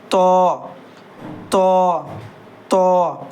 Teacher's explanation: تو اور زو دونوں موٹا پڑھنا ہے یعنی پر پڑھنا ہے تو منہ بھر کے منہ کو تھوڑا گول کر لیں گے اور پڑھیں گے تو تو تو.